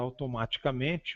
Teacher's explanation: o primeiro A é a vogal tônica, o segundo A é a vogal subtônica e as demais vogais são átonas